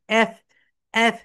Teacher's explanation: তোমরা যখন এফ উচ্চারণ করবে উপরের দাঁত নিচের ঠোঁটের সঙ্গে টাচ করবে।